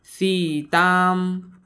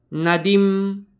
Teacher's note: शब्दाच्या शेवटी अनुस्वार आलाय तर त्याचा उच्चार आपण अर्ध्या म सारखा करतो